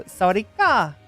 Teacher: And I've been told that tone, the uplifting tone at the end of it, is important